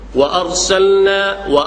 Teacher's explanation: Dalalna wa arsalna, lam dia hujung lidah, cuping lidah. Nun makhraj dia hujung lidah, sentuh tempat lebih kurang nak sama, hampir. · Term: izhar mutlak